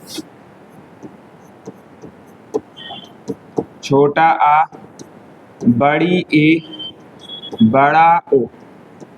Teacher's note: अर्धविव्रत स्वर की बारे में बात करें तो मुख हमारा आधा खुलता है